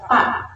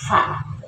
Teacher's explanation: Itu perut bibir bawah dengan ujung gigi depan atas jadi tidak bibir atas dan bibir bawah jadi tidak PA Bukan PA bukan peyum tapi Fa jadi perut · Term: huruf Fa